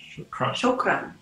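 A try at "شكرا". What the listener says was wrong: It's more like a rolled R a little.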